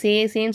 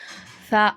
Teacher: சொல்லக்கூடாதுமா இத சா அப்படின்னு சொல்லணும் அதாவது எப்படின்னா நம்ம நுனி நாவு இருக்கா நுனி நாவை மேல் பல்லோட ஓரத்துல வைக்கணும் ஓரத்துல உரசும் போதுதான் நமக்கு இந்த சா அப்படிங்கிற எழுத்து வெளியாகுது